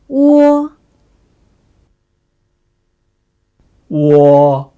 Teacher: The sound u is pronounced softly and shortly, whereas the sound o is loudly and long.